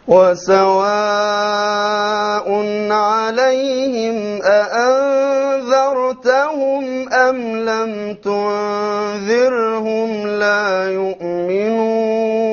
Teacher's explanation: So notice now how the Shaykh will change between ذر with a heavy ra and ذر with a light ra.